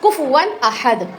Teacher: حروف حلقی میں سے حمزہ آ رہا ہے تو یہاں پہ اظہار کریں گے